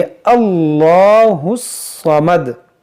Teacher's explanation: हम इस 'अल्लाह' के 'लाम' का उच्चारण दृढ़ता से करेंगे क्योंकि यहाँ एक 'फतह' है।